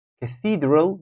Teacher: and falls and pools Cathedral Cathedral see Cathedral that will be the second syllable is taking the stress Cathedral we're not saying Cathedral or Cathedral we think Cathedral number